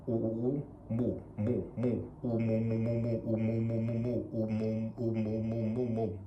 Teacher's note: I've formed the oo and then I say the m over top of it.